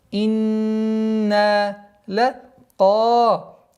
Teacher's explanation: Долгота в размере 2 огласовок фатха над буквой каф